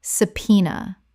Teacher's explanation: Three syllables with the b completely silent